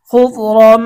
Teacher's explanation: তানভিনের পরে ইদগামে বা গুন্নার হরফ মিম আসছে, গুন্না সহ মিলিয়ে পড়তে হবে।